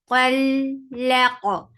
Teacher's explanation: Qul laq, lam is light for fat-ha up on your jaws, attach it qaf. Qaf will be heavy, qaf has qalqalah.